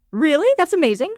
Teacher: Sharp rise, enthusiastic excitement